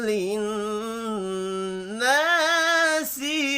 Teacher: نون مشدد پر غنہ کرنا ہے